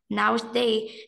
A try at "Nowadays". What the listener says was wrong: No, you need to pronounce your words properly. Nowadays. Can you see the S? Nowadays.